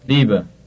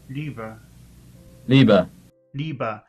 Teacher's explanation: the post-vocalic R in German has a vowel-like sound. It does not sound like the English R.